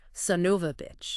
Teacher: how it gets squashed together in casual speech, son of a bitch. Yeah, or even Sanuva with those schwa sounds